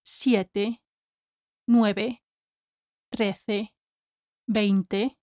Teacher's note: you can never drop the last E in numbers like siete, nueve, trece, veinte. If you drop the last E in those numbers, native speakers will never understand what you're saying.